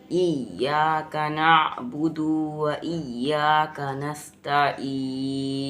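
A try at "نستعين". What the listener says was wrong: ता को एकदम लाइट, तईन। आइन का मखरज सही करो, तईन। फिर से इय्याका नअबुदु व इय्याका नस्तईन। ये दो को खींचना नहीं है, नअबुदु व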